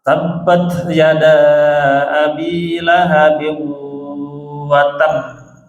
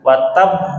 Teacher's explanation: di huruf ba terakhir itu tidak langsung mantul, ditahan dulu. Watab, karena ada tasydid.